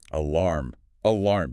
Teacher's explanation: the clear M sound at the end where your lips press together